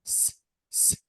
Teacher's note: if you want to touch your thrat while saying s s no vibration so this is voiceless